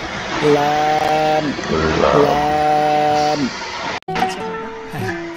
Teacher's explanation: জিহ্বার আগার কিনারা সামনের উপরের দাঁতের মাড়ির সঙ্গে লাগাইয়া উচ্চারণ হয় লাম, লাম